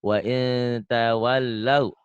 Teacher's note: Wa in ada bindeng dikit, ikhfa sedikit.